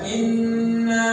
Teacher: Nun yang bertasdid itu itu 100% berada di batang hidung